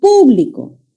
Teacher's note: le puedo cambiar la ubicación del acento puedo decir público en la antepenúltima sílaba y ya se convertiría en una palabra esdrújula